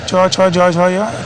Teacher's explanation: च छ ये तालु से होते हैं।